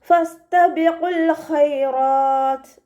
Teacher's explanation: ഫ ലൈറ്റ് ആക്കിയിട്ട് ഉച്ചരിക്കാൻ ശ്രദ്ധിക്കുക. മഖ്റജ് നമ്മുടെ മേലെ മുൻപല്ലിൻ്റെ അറ്റവും താഴെ ചുണ്ടിൻ്റെ ഉൾവശത്തെ നനഞ്ഞ ഭാഗവും ചേർന്നിട്ടാണ് പുറപ്പെടുന്നത്. ലൈറ്റ് ലെറ്റേഴ്സിൽ പെട്ടതാണ്, ശ്രദ്ധിക്കുക കേട്ടോ.